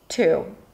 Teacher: So it's a T sound. There is a small breath there, like an H, because it's an aspirated T at the beginning of words.